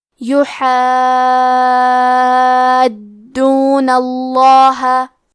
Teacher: کلمت یحادون میں حرف الحاء کو حلق کے درمیان والے حصے سے پڑھنا ہے · آخری میں کیونکہ نون پہ زبر ہے تو لفظ الجلالہ کے لام کا حکم ہے تفخیم، لہذا ہمیں حرف اللام کو موٹی آواز میں پڑھنا ہے · یہ مد لازم کلمہ مثقل ہے. اس مد میں ہم اپنی آواز 6 مد کے برابر لمبی کریں گے اور حرف دال کو 2 حرف کے برابر پڑھیں گے.